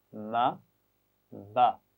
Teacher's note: میم اور با کے لیے ہم ہونٹوں کو ملا کر کھولتے ہیں